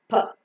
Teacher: you could find a slight H sound, which is called as aspiration in English, that gives a characteristic style to English language. · So the air that is coming out from the lungs is held up in the oral cavity for some time. And when both the lips get separated, the air comes out with an explosion.